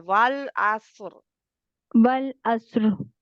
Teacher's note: वल जी, वल अस्र, स्वाद मोटा रा, आप स्वाद को तो मोटा कर रहे हैं, रा को मोटा करना है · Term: रा मोटी